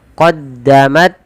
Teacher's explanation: Syiddah itu tertahannya suara. Jadi pertama qaddamat, suaranya tertahan. Yang kedua hamas, alirkan nafasnya.